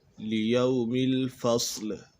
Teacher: یہاں پر صاد ہے حروف مستعلیہ میں سے ہے تو اسے پر پڑھیں گے